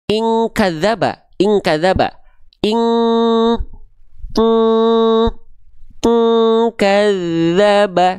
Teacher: Bunyi dengungan ang itu berarti tandanya bunyi dengungan yang kuat. sehingga keluarnya ang. Kenapa? Karena suaranya masuk semua ke dalam rongga hidung.